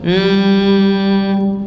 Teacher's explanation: dua bibir harusnya Al Al khaisyum yaitu pangkal hidung jadi dia kalau kita tutup mulut dia tetap bunyi m gitu m itu namanya pangkal hidung